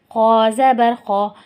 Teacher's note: خا موٹا حروف بھی ہے اور حروف حلقی بھی ہے، تو اس کو موٹا کر کے ادا کریں گے اور خا حلق سے بھی ادا ہوگا